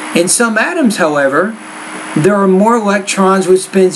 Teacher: i had a slightly higher inflection at the end of each of those thought grooves until I got to the last word in the sentence then my tone dropped